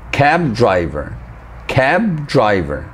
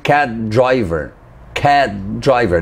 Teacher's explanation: notice how I stopped before pronouncing the B and when I released I didn't actually pronounce the b i pronounced the the for driver so I'll say it again